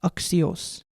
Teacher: It is conventionally pronounced as a K and an S put together